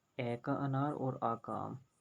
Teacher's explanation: इन दोनों का उच्चारण स्थान होता है कंठ